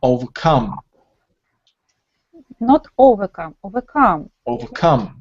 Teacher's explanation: we have three syllables and the stress falls on the third one because come it's a main word yeah overcome not overcome overcome